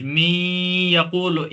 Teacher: می یقول یعنی ناک، نون کی آواز کو ہم ناک میں لے جائیں گے گنہ کے ساتھ